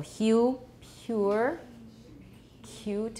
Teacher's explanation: when approximants are voiceless we hear friction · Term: voiceless palatal fricative